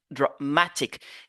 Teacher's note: dramatique regardez le choix qui remplace ici le a parce que le a ici a une faible prononciation